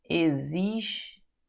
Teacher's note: Esse X tem som de Z, né? Existem. Vê se esse M não tem um som de I, assim, meio nasalizado.